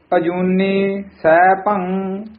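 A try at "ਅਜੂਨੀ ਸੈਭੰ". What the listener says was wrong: अजूनी वखरा बोलना है, कई अजूनी सह बोल जाते हैं, अजूनी सह भंग उच्चारण कर देंगे हैं, अजूनी वखरा बोलना है, सह भंग इकट्ठा कहना है, सह भंग नहीं कहना है, सह भंग जा कई गग्गा ला देंगे हैं, सह भंग कह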